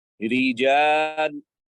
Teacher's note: So the light ra, the tongue in the back is at rest.